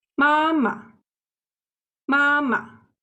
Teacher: there's another tone in Chinese, which is short and light, known as the neutral tone